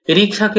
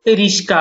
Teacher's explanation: রিক্সাকে অনেকে রিস্কা বলে থাকে, শটাকে আগে দিয়ে করে